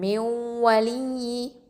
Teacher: இதில் வந்து அந்த நூன் வந்து வாவோட இணைஞ்சாலும் நூனில் உள்ள குன்னா வந்து மீதம் இருக்குது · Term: இதுகாம் நாக்கிஸ்